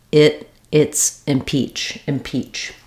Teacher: It has the clear E vowel, letter CH say the CH sound, peach, impeach. The first syllable will be short and unstressed, and it has the ih vowel, like in it or did.